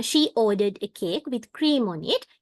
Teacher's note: For example, she ordered a cake with cream on it. In here, she ordered a cake. We rise our tone, and with cream on it, we fall our tone when we pronounce it.